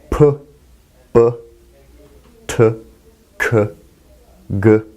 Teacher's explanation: So first we have stops. Stop sounds involve a complete closure. It's a stoppage of the airflow, followed by a release of that airflow.